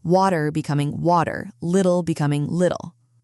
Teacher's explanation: T sounds turning into a soft D.